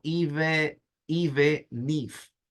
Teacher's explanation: No, mentalmente usted debería pensarlo como que no es la palabra even y luego if, sino que la N de even se conecta con la I de if. Entonces suena como even if. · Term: conexión